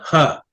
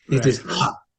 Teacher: Visarga is not a voiced sound. It is actually release of air.